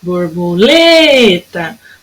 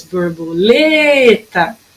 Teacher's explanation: o lê foi o que durou mais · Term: sílaba tônica